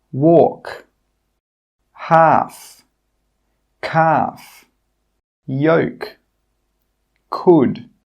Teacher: In all of these words, we are not pronouncing that L sound. The L is silent.